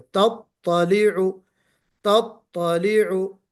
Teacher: الحطمہ، ہاں تطلع میں نے آپ کو ٹوکا تھا کہ تا کی جو تشدید ہے وہ بالکل واضح ہو